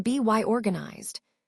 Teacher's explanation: the Y sound again acts as a linking sound